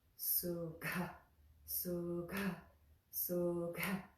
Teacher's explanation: you're really making that beat with not only the consonant, but the puff of air with that consonant